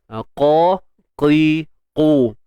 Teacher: Cuma untuk huruf qaf ni kita kena tebalkan.